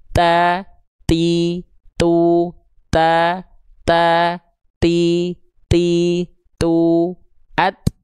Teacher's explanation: Dari segi nafas dia sifatnya hams, tapi kadarnya bukan mengalir nafas, cukup hanya terpercik saja. Dipercikan saja nafasnya, dipercikan saja nafasnya.